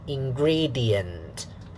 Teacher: Okay, syllable 1. Syllable 2 will be stressed. So, and then syllable 3 unstressed. Syllable 4 unstressed. So, weak, strong, weak, weak.